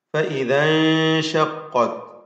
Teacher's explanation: സാക്കിന നൂൻ ഇഖ്ഫാ ചെയ്ത് അവ്യക്തമാക്കി മണിക്കുക